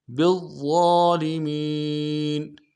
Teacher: موٹا کریں گے، ضا کے اوپر تشدید زور دیں گے، اور ضا کے اوپر کھڑا زبر بھی ہے، ایک الف دال میں کھینچیں گے ، اور میم کو یا کے ساتھ ملائیں گے، یا مدہ